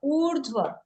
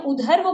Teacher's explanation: तो उसका स्वरूप यह हो जाएगा उधव इसको बोला जाएगा उधव इस रेफ को पहले बोलेंगे उकार के जस्ट बाद